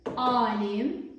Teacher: Qeyd etmək istəyirəm ki, uzanmanın işarəsi qoşa nöqtədir. Sözün əvvəlində baş verdi uzanma